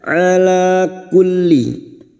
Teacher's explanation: Alif kecil di atas dua harakat kita panjangkan